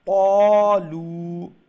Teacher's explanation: Three alif long. The lu is a three alif long. · One alif long. So make sure you do the qa one alif long. Okay, you stretch the lu, but the qa, make sure you pronounce it one alif long.